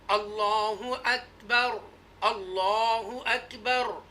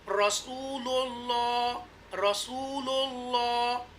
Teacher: the word Allah Almighty has a zaba or pesh, then the lam will be pronounced with the tafkhim mota, bold. And if the letter before the lam in the word Allah Almighty has a zir, then it will be pronounced with the tarkeek, right?